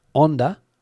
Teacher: The H in the word Honda is not pronounced here in Spain